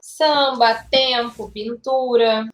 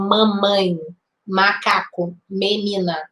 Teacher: esse M ele não tem um som de m que você junta os dois lábios assim ó o de cima e o de baixo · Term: dígrafo vocálico